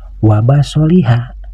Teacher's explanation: Maka membaca huruf H di akhir kalimat ini dibaca hanya 1 harakat atau 1 ketukan saja.